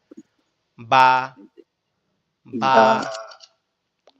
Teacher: দুই ঠোঁট একসাথে লেগে থাকবে, লেগে থেকে পৃথক হয়ে যাবে।